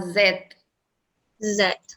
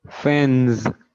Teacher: you need to use your vocal cords and they produce a vibration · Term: voice sound